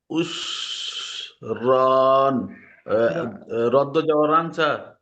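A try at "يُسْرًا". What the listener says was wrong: না না না, দুই যাবারটা হবে না, একটাই যাবার উচ্চারণ হবে, আর একাধিক টান হবে। র আলিফ যাবার র, ইউসর।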